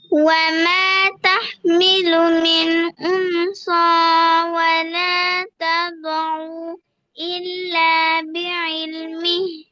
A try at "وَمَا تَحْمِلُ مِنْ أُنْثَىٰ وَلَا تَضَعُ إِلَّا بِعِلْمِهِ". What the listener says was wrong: ওকে, আপনার ভুল হয়েছে। উং সা, সা নরম হবে, আপনার উং স হয়ে গেছে। উং সা।